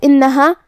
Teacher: کلمت انہا الف کے نیچے زیر ہے تو ہم حمزہ کو نیچے سے ادا کریں گے، حمزہ کی ادائیگی حلق کے نیچے والے حصے سے ہے، پھر حرف النون ہے اور اس پہ تشدید ہے تو 2 حرف کے برابر ہمیں حرف النون کو پڑھنا ہے۔